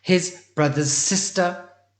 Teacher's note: You could not hear the repeat of that S.